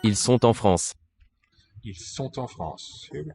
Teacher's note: Hear that final T of the verb, normally sont, because the following word with which it's in a phrase begins with a vowel. And so that syllable has an available seat for the consonant sound to appear in.